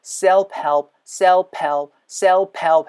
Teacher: 윗니가 아랫입술을 붙잡은 상태에서 바람이 훅 하고 나와요. 그리고 나서 help 할 때 입술이 닫혀야 돼요.